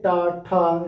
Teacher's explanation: जीभ दांत के ऊपर मूर्धा में जाके टकरा रही है